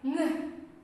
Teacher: back of the tongue raised towards the soft palate. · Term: velar nasal sound